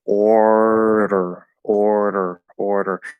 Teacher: So it kind of just goes from that you tap the tip of the tongue, and then you just pull it back into a full order, order, order. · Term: little tap